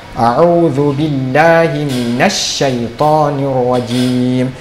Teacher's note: Et ya ukhti, tout d'abord fais attention à minash shaytani rajim. Il faut faire la liaison entre minal et ash-shaytan.